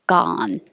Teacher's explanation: this vowel is ah so you definitely have to open ga if not it could sound like gun gone headache headache